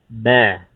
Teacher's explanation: Ba dari kedua bibir yang ditekan, ya, tapi menekannya sedang saja, jangan terlalu kuat, ya. Ba biasa aja. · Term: huruf ba